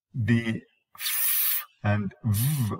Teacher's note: The f and v, both of them are described as labio dental.